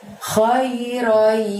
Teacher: Roinya masukkan ke huruf y di sana atau huruf ya dan ditahan selama 2 harokat. Khairoi, baru kemudian bunyi yaroh.